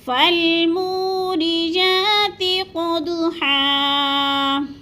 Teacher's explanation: ہا دو زبر ہن وقف کی صورت میں ایک زبر میں بدل کر پڑھنا ہے